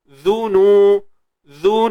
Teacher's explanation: Sebab huruf zal tu berbaris hadapan. Jadi kita kena muncungkan dia.